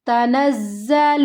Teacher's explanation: نون کو زا کے ساتھ ملانا ہے، مضبوطی کے ساتھ، سختی کے ساتھ